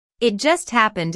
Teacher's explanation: It just happened is a way of saying it happened a moment ago. Notice the stress on just, which emphasizes that the accident happened very, very recently.